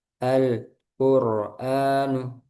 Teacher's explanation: Jadi lamnya habis langsung ke qaf.